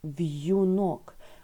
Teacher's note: в слові в'юнок буковка Ю позначає два звуки Й, У